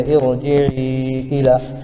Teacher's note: را ساکن سے پہلے زیر عارضی ہے اس لیے اس را کو پر پڑھیں گے